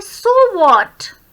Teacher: व्हाट पे हम stress देते हैं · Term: राइजिंग इंटोनेशन